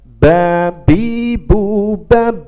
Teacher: Ba ini adalah bibir atas kita menempel kepada bibir bawah